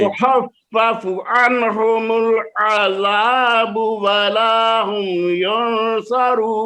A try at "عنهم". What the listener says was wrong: عن دیتے نون ہل گئی آپ کی عن